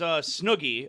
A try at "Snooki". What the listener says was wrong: It's with a K. Snook. It's not with a G.